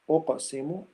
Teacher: أقسم that's قلقلة صغرى weak قلقلة